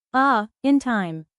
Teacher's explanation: the tongue moves from low front to high front.